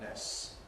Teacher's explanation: Perhaps even more so, people say things like nests, where really the T can disappear between the two S's. But there are two S's, it's long. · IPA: [ness]